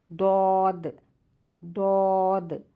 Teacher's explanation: پھر آپ کا جو زبان کا درمیانی حصہ ہے وہ تالو کے درمیانی حصے سے ملنے سے ادا ہوتے ہیں جیم شین یا، پھر آپ کا دود آ جاتا ہے، دود میں آپ کے جو زبان کا کنارہ ہے اوپر کے 2 داڑوں اور مسوڑوں سے لگنے سے ادا ہوتا ہے، ایک کنارہ بھی ادا کر سکتے ہیں اور 2 کنارے بھی ادا کر سکتے ہیں، دود دود، ایک کنارے سے بھی ادا ہوگا اور 2 کنارے سے بھی ادا ہوگا۔